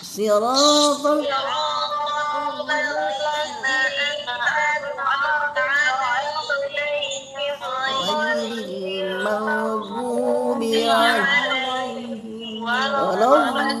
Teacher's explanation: Hati-hati dotnya jangan keluar angin.